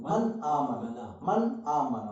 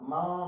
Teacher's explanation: माँ नहीं पढ़े। मन आमना, मन टच करके आगे चलना है। मन आमना, मन आमना, मन माँ नहीं, मन आमना। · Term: इज़हार